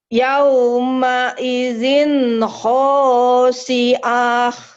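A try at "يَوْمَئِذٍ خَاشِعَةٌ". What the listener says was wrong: Pendek atuh, pendek. Pendek. Ya, Khosyiah kayak siapa namanya? Pendek atuh. Yauma idzin yauma idzin khasyiah.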